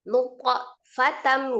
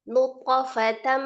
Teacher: Jadi langsung ya alam alam yaku juga jangan naikkan dia yaku enggak alam yakunu thofatam ya langsung ya alam yakunu thofatam nah di situ ada huruf th sukun dibacanya qalqalah ya dipantulkan ketika di tengah atau di wasal dia qalqalah sugra ya qalqalah kecil